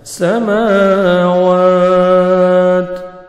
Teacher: تا ساکن ہو جائے گا اور تا کا لائٹ سے ساؤنڈ آئے گا، ہلکا سا